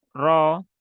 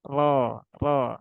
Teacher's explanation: jadi bedakan suaranya antara ro yang tebal dengan yang tipis dan ini dibaca tebal karena rnya berbaris fathah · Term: ro tebal